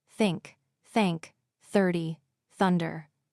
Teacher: Put your tongue gently between your teeth and blow air out for the hard th.